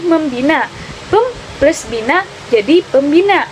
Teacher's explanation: Misalnya dalam prefiksasi me atau pecul bunyi nasal yang homorgan dan dengan ponem pertama dari dasar yang diberi prefix itu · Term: pemunculan ponem